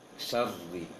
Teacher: Penting tidak ada jarak antara sya dengan ro-nya. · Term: tasydid